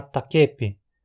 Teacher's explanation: Novamente, por harmonia vocálica, o caráter frontal, palatal do i átono transfere essa característica para a vogal tônica, fazendo-a se tornar mais alta e anterior na boca. Assim, takapi se torna takepi.